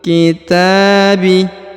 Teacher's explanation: Huruf ta dipanjangkan dua harakat karena di atasnya terdapat tanda Alif kecil